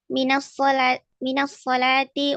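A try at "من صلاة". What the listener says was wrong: Kan enggak pakai alif lam. Kan enggak pakai alif lam. Min salatin.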